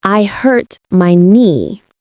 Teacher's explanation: You don't pronounce the K in knee or the B in doubt. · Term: silent letters